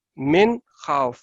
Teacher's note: یہ یہاں پہ نون کے اوپر آپ نے غنہ نہیں کرنا ہے کیونکہ نیکسٹ جو ہے وہ حروف حلقیہ میں سے ہے